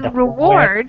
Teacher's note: we have the emphasis on the second syllable in reward